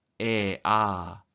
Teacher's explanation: 혀가 아래로 내려가서 바닥에 붙어있는 모음입니다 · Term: 저 모음